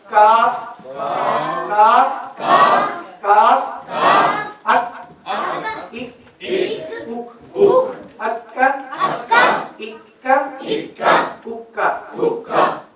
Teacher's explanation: قاف میں یہ تالو کا نرم حصہ اور کاف میں تالو کا سخت حصہ ادا ہوتا ہے.